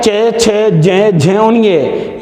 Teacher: ये 5 व्यंजन तालु से बोले जाने के कारण इन्हें तालव्य वर्ण भी कहते हैं।